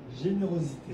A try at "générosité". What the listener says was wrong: Générosité. T. Il ne faut pas oublier le T.